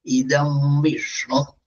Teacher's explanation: സ്വരസന്ധി ദം നും ഉദാത്തം, വീന്നും ഉദാത്തം. അപ്പൊ കൂട്ടിച്ചെല്ലുമ്പോഴും അത് രണ്ടും ഉദാത്തം തന്നെ.